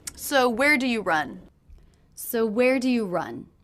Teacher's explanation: this is a question but did you notice the intonation went down at the end run run that's because it's a question that cannot be answered